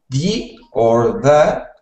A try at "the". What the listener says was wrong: So when you were speaking, you were saying it like a D, like da or D. Make sure that you are making that TH sound like you just made was perfect. So the.